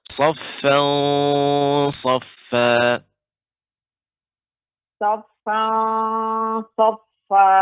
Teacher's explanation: harus diperhatikan tanwin bertemu dengan shad ya. Ini ikhfanya tebal ya, karena shad huruf isti'la.